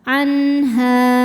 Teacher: ha hukumnya Mad thobii dahiri sebab ada Alif didahului harakat fathah cara membacanya ha dipanjangkan dua harakat